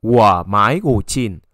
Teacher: the last one always keep it as the original tone, the third tone